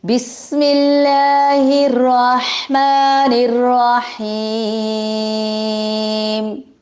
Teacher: بسم اللہ الرحمن الرحیم، اللہ تعالیٰ کے نام کو باریک پڑھیں گے کیونکہ اللہ تعالیٰ کے نام سے پہلے زیر آئی ہے. سین کو سیٹی کے ساتھ سختی کے ساتھ ادا کریں گے